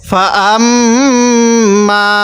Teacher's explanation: মিম এবং নুনের উপর তাজদিদ হয় সেখানে গুন্না করতে হবে তো এখানে মিমের উপর তাজদিদ আছে এজন্য আমি গুন্না করছি